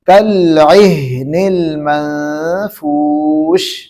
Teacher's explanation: جی، کالعہن المنفوش کو ہم ذرا جو ہے نا دھیان سے پڑھیں گے۔ بہت سارے حضرات جو ہے نا عہن کر دیتے ہیں، یعنی ہا پر جو ہے نا قلقلہ کر دیتے ہیں، حالانکہ ہا پر قلقلہ نہیں ہوتا ہے